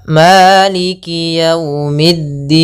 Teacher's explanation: mana ya termasuk huruf mad maka di sini kita namakan dengan Mad Arid di sukun panjangnya berapa boleh dua harakat boleh empat harakat